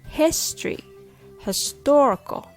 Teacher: History has the stress on his. Historical has the stress on tor. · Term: stress placement